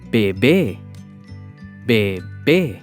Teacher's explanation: we stress the second syllable 'bé'